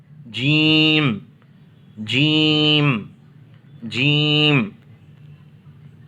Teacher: ज़बान का जो बीच वाला हिस्सा है उसको ऊपर की तारक में लगाएंगे तो जीम अदा होगा।